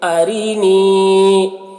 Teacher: یہاں پر را کو باریک پڑھیں گے کیونکہ را کے نیچے زیر ہے